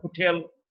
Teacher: the place of articulation is glottal is produced from the glottis